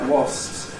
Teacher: you probably get a bit of a labial gesture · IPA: /wɒs(p)s/